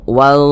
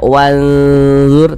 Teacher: huruf dha ini dia huruf tebal. Dia termasuk kepada huruf isti'la. Sehingganya bunyinya pun kita tebalkan.